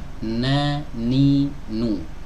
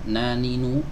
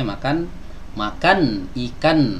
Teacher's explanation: bagian yang menyempurnakan yaitu suara sengau yang keluar dari pangkal hidung nehnik NU sebagaimana kita mengucapkan huruf n dalam bahasa Indonesia sama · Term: huruf nun